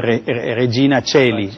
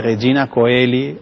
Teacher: diptongo AE se pronuncia E en latín, así como el diptongo OE